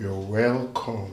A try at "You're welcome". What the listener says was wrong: You don't have to squeeze your mouth like that. You're shifting your mouth one side.